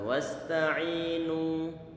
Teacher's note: Ini nunnya didhammahkan, maka kita monyongkan bibir kita.